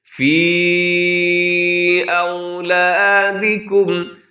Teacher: اسے مد منفصل کہا جاتا ہے، اسے 4 سیکنڈ تک لمبا کر سکتے ہیں، اس سے کم بھی آپ اس کو لمبا کر سکتے ہیں۔